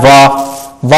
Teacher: वा को उच्चारित करते हुए दंत से भी टच होता है, ओष्ठ से भी टच होता है, तो इसको क्या बोलते हैं, दंतोष्ठीय ध्वनि, है ना, दंतोष्ठीय वर्ण।